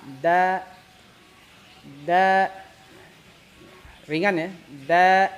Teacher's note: Istifal itu tipis karena si pangkal ya, pangkal lidah itu tidak naik ke langit, melainkan diturunkan, kayak gelar karpet.